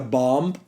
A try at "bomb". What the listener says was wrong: Are you pronouncing the B in bomb? Don't pronounce the B. Please. Bomb. B-O-M. Bomb. It's spelled bomb.